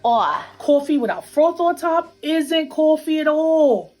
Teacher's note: one feature common in New York City is what we call a raised vowel in words like thought and cloth